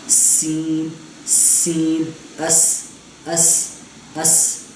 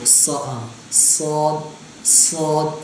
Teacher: یہ سین کو ہم نے باریک پڑھنا ہے اور صاد کو موٹا پڑھنا ہے